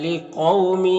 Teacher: قاف حروف مستعلیہ میں سے پر پڑھیں گے